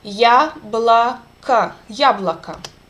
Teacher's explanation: Ya is under accent and it's clear, and this two O sounds reduced to A.